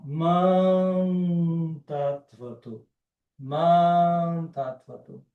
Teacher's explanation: Então, mam, quando eu fecho os lábios é mã. Quando eu não fecho os lábios, eu solto o som pelo, né, com auxílio aqui do nariz, aí ele vira uma nasal.